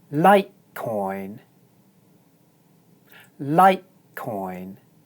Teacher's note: the diphthong oi is pronounced long because it's followed by the voiced consonant sound n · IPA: /ɔɪ/